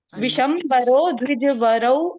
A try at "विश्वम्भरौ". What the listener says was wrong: विषम नहीं विश्वम।